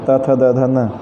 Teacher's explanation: त थ द ध न का जो उच्चारण स्थान है यह मूल रूप से दंत है · न के उच्चारण स्थान में दांत और नासिका दोनों सहायक हैं